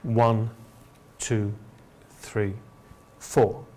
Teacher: we go up up up until the last part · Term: enumerations